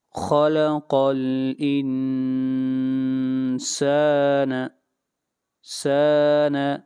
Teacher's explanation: آیت نمبر 2، خلق الانسان، خلق، خا کو موٹا پڑھیں گے، قاف کو موٹا پڑھیں گے اور نون کے اوپر یہاں پر اخفا کریں گے، آواز کو ناک میں لے جائیں گے، غنہ کریں گے